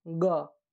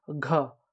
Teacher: अब इसमें देखिए क ताकत कम लगा और हवा भी कम निकला, क, ख ताकत ज़्यादा लग रहा है, ज़्यादा हवा भी निकल रहा है, ग एकदम हल्का आवाज, हवा कम निकला, घ हवा निकलेगा, ताकत लग रहा है